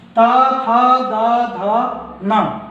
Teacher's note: ता था दा धा न, ये 5 दंत व्यंजन हैं